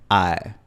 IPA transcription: aɛ